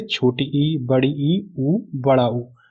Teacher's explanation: बोलने में मुंह कम खुलता है, मतलब इन स्वर को जब हम बोलते हैं तो हमारा मुंह कम खुलता है। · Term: संवृत स्वर